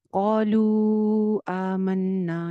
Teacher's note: अब इसमें क्या है, कौलू एक अलग वर्ड है, आमन्ना एक अलग वर्ड है। कौलू के वाव मद्दा पे मद आई है अगले हमजा की वजह से जो अगले वर्ड में है।